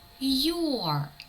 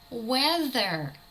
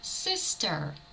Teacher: Якщо наша літера R іде в кінці слова цей звук також випадає